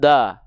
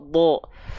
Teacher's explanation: Huruf dhad adalah huruf yang tebal. Ketika dia berharokat fathah, maka kan dibacanya bukan da, tapi dengan vokal O, do.